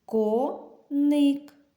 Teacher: у слові коник два склади коник наголос припадає на перший склад